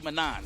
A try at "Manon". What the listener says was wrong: Yeah, the N don't exist. That's a French thing.